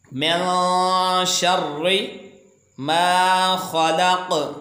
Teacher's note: नून साकन के बाद ये शीन हुरूफ़ इख़्फ़ा का हिस्सा है तो इसको गुन्ना करेंगे और एक अलिफ के बराबर इसको खींच कर भी अदा करेंगे। तो ये टिक लगाकर ये इशारा दिया गया है कि इसको आपने गुन्ना की अदायगी के साथ आपने इसको पढ़ना है।